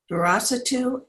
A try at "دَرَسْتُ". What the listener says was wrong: Darastu, not Darasatu. There's a sukoon over the seam. Darastu.